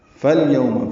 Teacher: فا کو لام سے ملائیں گے، یہ بیچ میں الف نہیں پڑھیں گے، حمزہ عارضی ہے الیوم کا، یو وولین ہے، ہونٹوں کو آگے لائیں گے، نہ تمام گول کریں گے.